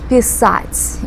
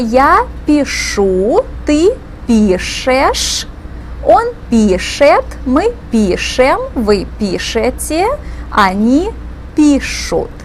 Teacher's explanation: So we have a consonant mutation. Instead of the S sound that we have in the infinitive, писать, in the conjugated forms, we have the letter ша that gives us the SH sound.